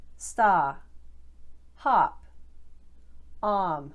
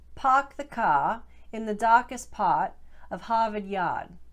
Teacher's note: you're going to drop that initial r sound and elongate the vowel